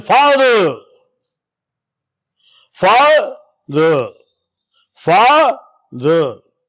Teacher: There is a much difference in taking time and using energy. And fa takes more energy in comparison of the der.